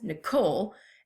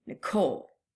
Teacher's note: So my name is 2 syllables, Nicole, and I emphasize the last part of my name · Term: iamb